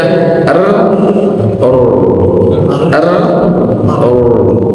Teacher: ro itu pertama adalah takrir getaran lidah